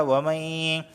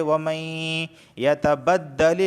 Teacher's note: وَمَن يَتَبَدَّلِ الْكُفْرَ، وَمَن، نون ساکن کے بعد یا آیا ہے اور یا حروف یرملون میں سے ہے تو اس وجہ سے یہاں پر ادغام بھی ہوگا۔ وَمَن، یہ ادغام کر رہا ہوں کہ نون کو یا میں داخل کر دیا، وَمَن، اور یہاں پہ غنہ بھی ہو رہا ہے، وَمَن يَتَبَدَّلِ الْكُفْرَ بالایمان، یہاں پر دیکھیں یا ساکن سے پہلے زیر آیا ہے اس وجہ سے میں اسے کھینچ کے پڑھ رہا ہوں۔